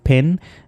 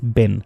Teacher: इन दोनों में एयर जो है वो आपके माउथ में स्टॉप होती है और उसके बाद एक्सप्लोजन के साथ जो है प्रनाउंस होती है, इस वजह से इन्हें प्लॉजिव साउंड्स भी कहते हैं।